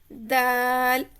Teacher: जुबान के नोक ऊपर दांतों के सामने वाले दो दांतों की जड़ से लगे तो दाल अदा होता है · زبان کے نوک اوپر دانتوں کے سامنے والے 2 دانتوں کی جڑ سے لگے تو دال ادا ہوتا ہے